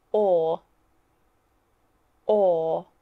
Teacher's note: our tongue stays flat